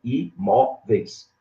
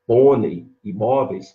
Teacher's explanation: o E é a vogal, o I é a semivogal, então ele desce, ele é decrescente. Esse tipo de palavra não tem dupla pronúncia. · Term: ditongo decrescente